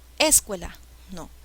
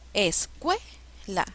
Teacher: La sílaba que lleva la mayor fuerza de voz es cue. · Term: palabra grave